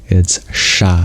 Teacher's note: it's a retroflex sha